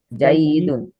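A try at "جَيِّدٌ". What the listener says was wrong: এখানে জাইয়িদুন হবে, এখানে ইয়ার মধ্যে তাসদীদ ছিল, তাসদীদ হয়তো লিখায় আসে নাই।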